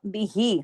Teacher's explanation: खड़ा जेर ही इतना खिंचेगा जितना या मद्दा खींचता है